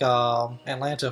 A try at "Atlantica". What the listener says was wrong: Oh, Atlantica? You said Atlanta.